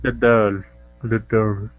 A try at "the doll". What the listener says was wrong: Okay, almost. Don't use a different vowel sound for the E. It's only the L. Del. Del.